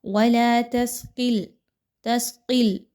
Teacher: قاف موٹا کر کے پڑھا جائے گا جبکہ لام کو باریک ہی رہنے دیا جائے گا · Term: لام باریک قاف موٹی